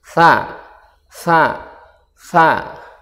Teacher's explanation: huruf tsa diucapkan dengan ujung lidah menempel di ujung gigi bagian atas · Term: huruf sa